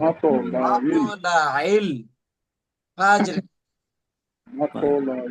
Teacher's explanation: এখানে আইন উচ্চারণ করতে হবে এবং কলকলা করতে হবে